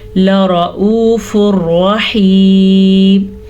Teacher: لام کو باریک پڑھنا ہے، را کو پر پڑھنے کے چکر میں لام کو نہیں پر پڑھنا